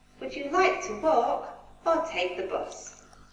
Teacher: Walk, we go up, and then take the bus, we go down. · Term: falling intonation